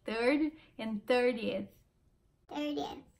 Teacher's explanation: Outra coisa que TH no final da palavra. Esse som que você põe a língua na frontinha do dente, assim, não é um som natural da língua portuguesa